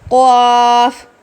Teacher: اس کی ادائیگی کے وقت منہ بھر کر پڑھیں گے، یعنی کہ یہ موٹا پڑھا جاتا ہے. اور دوسری جو چیز جس کا آپ نے دھیان رکھنا ہے وہ یہ کہ قاف آپ کے ہونٹ گول نہیں ہونے چاہیے.